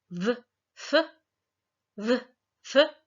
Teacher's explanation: those are known as fricatives, as you might think of it as there's some friction there as the sound is passing through and out of the mouth